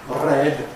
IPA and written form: red (red)